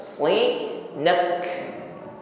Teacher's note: Karena kita berhenti pada huruf kaf, maka tampakkan sifat hams pada huruf kaf.